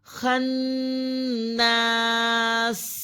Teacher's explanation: نون مشدد دوبارہ آ گیا ہے اور نون مشدد پر غنہ کیا جائے گا، اور یہ الف ہے، الف سے پہلے زبر ہے جسے ایک الف کے برابر کھینچا جائے گا۔